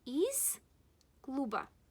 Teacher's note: Z is paired with S. That's why we will pronounce it as S.